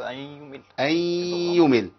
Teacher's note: مهم قوي بيان الغنه لان في عندنا راوي لا يدغم بغنه